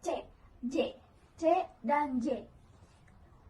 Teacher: Dimulai dengan hambatan total atau stop yang diikuti pelepasan melalui celah sempit, di mana artikulasi yang sama, contohnya C, J, C, dan J.